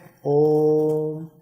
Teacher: इसका उच्चारण में हमें ह्रस्व स्वर से तिगुना समय लगता है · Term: प्लूत स्वर